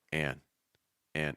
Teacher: an and sound like an man that's a slightly different sound the a changes a bit when you put that n after it you're going to move your tongue back a little bit do a heavy breath out of your nose keep your placement down it's like an and it's not on